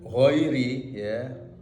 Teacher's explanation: ghain itu termasuk huruf rikhwah, yakni suara mengalir.